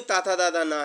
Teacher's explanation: ये जो ताथा दादा ना है ये आपके दंत के हैं